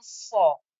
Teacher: Sad is a thick, heavy letter where the back of my tongue becomes thick and raised up.